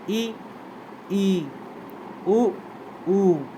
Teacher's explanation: संवृत यानी क्लोज जिन स्वरों के उच्चारण में मुख जो है वो लगभग बंद रहता है लगभग बंद रहता है पूरी तरीके से बंद नहीं रह सकता